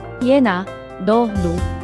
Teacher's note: 니은는 비음으로서 코를 통해 소리가 울리는 특징을 가지고 있습니다